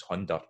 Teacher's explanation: some dialect areas of Scots, like Perthshire, where the D is present, and hunner, for the English 100, becomes hunder.